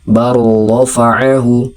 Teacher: Tetapi dibaca rnya menjadi bertasydid lamnya hilang. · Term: idgham mutaqaribain